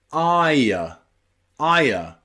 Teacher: you've got another sound on the end, usually a schwa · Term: ire sound